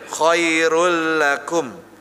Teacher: Khairul, jangan khairun lakum. Langsung masuk ke L-nya.